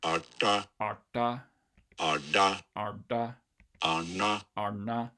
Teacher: we do have the retroflex er in English, and you just kind of superimpose that on top of the relevant stops